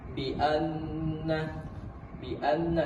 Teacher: Bianna ini masuk ke gunah musyaddadah karena nun yang bertasydid dibaca dengan dua harakat